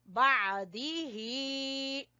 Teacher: आइन को गले से निकालना है, गले के दरमियान से